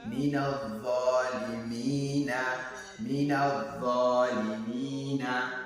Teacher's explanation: So here we have haruful madhi, which is ya with sukuni, and before it there is mim with kasra. So here we will have to prolong mi because of this ya al madhi